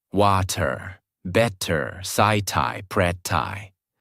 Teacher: They say each word with a hard t sound.